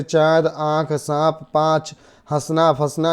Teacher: तो इस प्रकार से चंद्रबिंदु, चंद्रबिंदु वर्ण के ऊपर अर्धचंद्राकार रूप में लगाया जाता है। उसका उच्चारण नाक मुख की सहायता से किया जाता है